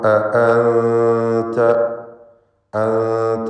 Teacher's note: നൂനിനെ മറച്ചു മണിച്ചുച്ചരിക്കണം. ഇഖ്ഫ ഹഖീഖി നൽകണം.